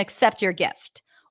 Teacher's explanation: in normal conversation, people just reduce the first syllable to a schwa.